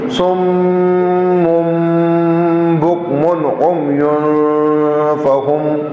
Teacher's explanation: سم اور میم پر شد ہے تو غنہ بھی ہے